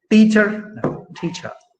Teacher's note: the tip of the tongue touches the front part of the teeth or you know it's placed just behind the teeth before it's